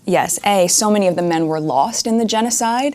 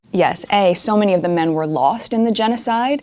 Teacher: Rising intonation replaces the conjunction but